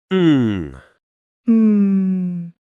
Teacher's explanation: It feels like the sound is coming from the back of my nose and throat. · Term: nasal sound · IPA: /ŋ/